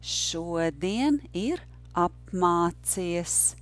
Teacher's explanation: the rhythm is yes, no, no, yes, no, no.